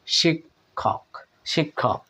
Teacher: পরের ক টা খ এর মত সাউন্ড দিয়ে থাকে কারণ সেটা অনেক বেশি বাতাস লাগে তাই এটা মহাপ্রাণের মত হয়ে যায় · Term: যুক্ত খ